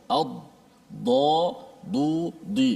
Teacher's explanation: Dad dia adalah makhrajnya adalah bahagian tepi lidah yang diangkat ke gerhang atas. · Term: huruf dad